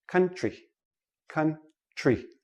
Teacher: TR TR together usually sounds like CHR